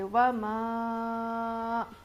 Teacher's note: پڑھیں گے، ما، و ما، اوپر مد ہے، مد منفصل ہے، 5 الف کے برابر ہم اس کو کھینچیں گے